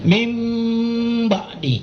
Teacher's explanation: Nun sukun ketemu ba. Nah, jadi bacanya mingkem.